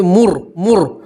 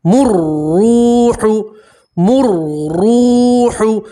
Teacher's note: را کے اوپر تشدید ہے, میم کو آپ را سے ملائیں گے